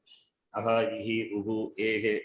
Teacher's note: Visarga, can you pronounce it? No. Doesn't have separate pronunciation. Based on the vowel, it gets a sound.